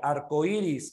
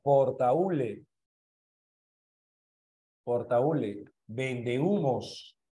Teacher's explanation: Ahí hay un hiato acentual. Tengo dos palabras en la cual la cerrada tiene mayor fuerza de voz que la vocal abierta.